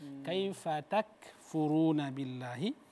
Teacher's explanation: Ka enggak boleh dibaca tebal